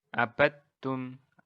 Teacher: Jadi nggak ada qalqalah dal di sini.